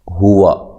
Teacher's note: واو کو ادا کرنا ہے ہونٹوں کو گول کرتے ہوئے